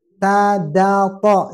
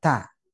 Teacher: Yang keluar dari ujung lidah, ta, da, to. Yang keluar ta. Sementara da dan to tidak hembus.